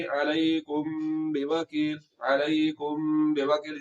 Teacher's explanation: हमने आवाज को नाक में छुपाना होता है। तो यहाँ पर मीम साकिन के बाद बा आ गया तो यहाँ पर इख्फा होगा, आवाज को नाक में छुपाया जाएगा। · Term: इख्फा शफवी